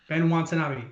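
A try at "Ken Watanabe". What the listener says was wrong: Ken. Ken. With a K, like Barbie.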